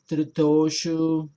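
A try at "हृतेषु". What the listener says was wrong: You're saying Toshu again. Teshu.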